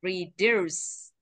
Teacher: Trọng âm rơi hai thì phải mạnh vào âm thứ hai ạ.